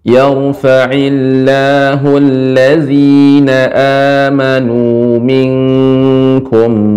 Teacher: ikhfa pada kaf jadinya eng